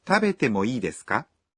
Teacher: When you ask for permission, you add ka at the end of the sentence and say it with a rising intonation.